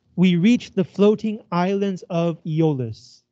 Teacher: each two syllables is a pair and it sounds like unstressed stressed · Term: iambic pentameter